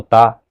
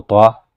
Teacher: آپ پتلا پڑھیں گے تو تا، اگر موٹا کر کے پڑھیں گے تو طا، یعنی تا اور طا ایک جیسی آواز ہے، تو اس کو ہم آواز حروف کہا جاتا ہے، تا، طا۔